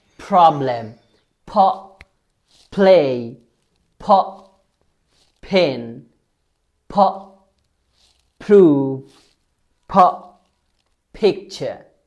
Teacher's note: দুই ঠোঁট একসাথে করে জোরে ধাক্কা দিবেন যাতে বাতাস বের হয়।